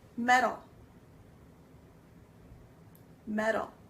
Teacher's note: It ends up having a soft T sound which then sounds like a D